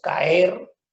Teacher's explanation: en caer se está produciendo, digamos, el encuentro de dos vocales fuertes, A, E, pero se separan